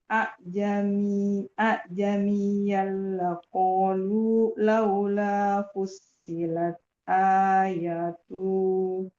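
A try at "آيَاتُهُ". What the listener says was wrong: Tuhnya jangan dipanjang. Ayatuh.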